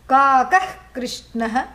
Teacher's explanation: that throat cleansing sound is jihva muliya, means at the root of the tongue, the sound that is produced from the root of the tongue